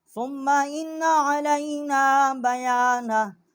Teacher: علینا، نون الف زبر نا، ایک الف جتنا جو ہے یہاں آواز ہم نے اس کی اٹھائی ہے